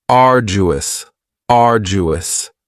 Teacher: Now you don't hear that d sound that much. It's not very strong. It almost sounds a little like a J.